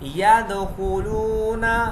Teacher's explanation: واو ساکن سے پہلے پیش ہے، یہاں پہ ہم واو مدہ کا قاعدہ کریں گے اور 2 سیکنڈ کھینچ کے پڑھیں گے